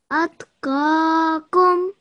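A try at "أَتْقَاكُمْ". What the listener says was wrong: Make this a little bit rounder, a little bit thicker, this qaf.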